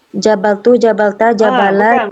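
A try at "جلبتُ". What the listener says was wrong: Bukan jabal tapi jalab. Lam yang kedua huruf lam. Jabal. Salah. Jalab. Bukan jabal.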